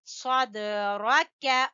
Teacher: صاد دال کے اوپر ہلکا سا کلکلا ہوگا